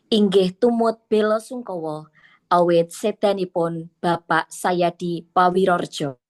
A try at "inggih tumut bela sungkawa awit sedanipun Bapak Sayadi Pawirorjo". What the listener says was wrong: Cobi jenengan le maca ora karo semu mesem.